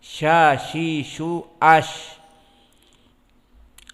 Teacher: Lisan kita yang tengah dengan menyentuh kepada apa-apa yang di atasnya dari al-hanak al-a'la. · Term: wastul lisan